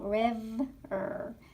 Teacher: my teeth are hitting my lips to close that syllable. River. So that's considered a closed syllable.